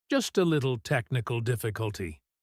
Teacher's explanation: He uses a lighter tone to downplay the problem.